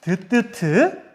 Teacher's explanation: 윗 잇몸과 혀끝이 닿아서 나는 소리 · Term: 잇몸 소리